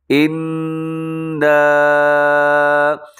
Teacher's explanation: جب بھی نون کے اوپر میم کے اوپر شد نظر آئے اپنے وہاں پر غنہ کرنا ہے، آواز کو ناک میں لے کے جانا ہے۔ ان، اب اس کو ہم نے لمبا اس لیے کیا ہے کیونکہ اس کے اوپر مد کا سائن ہے، اس لیے یہ چھوٹی مد ہے، اسے مد منفصل کہا جاتا ہے، مد جائز بھی کہا جاتا ہے۔